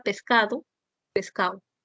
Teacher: la elisión de la consonante oclusiva dental Sonora cuando está en última sílaba